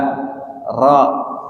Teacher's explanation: Ro itu ada getarannya kan.